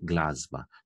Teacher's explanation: Nezveneči s se spremeni v zvenečega.